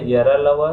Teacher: य र ल व में कम प्राण वायु का उपयोग करना पड़ता है इसलिए ये अल्प प्राण है